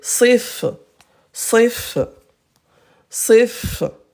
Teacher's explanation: Fa avec un petit rond. C'est zéro voyelle, c'est l'absence de voyelle.